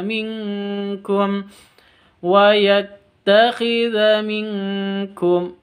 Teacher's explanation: nun sukun bertemu dengan Kaf samar disertai dengung